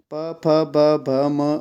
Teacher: प फ ब भ म ओष और प वर्ग में आते हैं · तो प वर्ग का उच्चारण स्थान क्या है, ये है आपका ओष्ठ। ठीक है, प फ ब भ म ओष्ठ और प वर्ग में आते हैं।